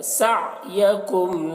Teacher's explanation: عین ہے تو عین کو حلق سے ادا کریں گے